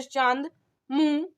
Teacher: अनुनासिक का उच्चारण नाक और मुंह से होता है,